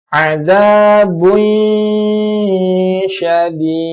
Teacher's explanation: dhammah tain bertemu dengan shin, ini hukumnya adalah ikhfa, samar, maka harus ditahan juga. Adzabun syadid, ya, sama bacaannya 3 atau 4 harokat.